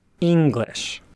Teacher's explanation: In my opinion, atamadaka is the easiest pitch accent pattern for native English speakers to mimic, as there are many words in English, such as the word English, that start with a relatively high pitch and then drop, again, as in English.